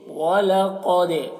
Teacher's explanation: दाल में कलकला करेंगे क्योंकि दाल हुरूफ़ कलकला में से। वलक़द, दाल की आवाज़ में एक किस्म की जुम्बिश होगी। वलक़द, इसे कलकला कहते हैं।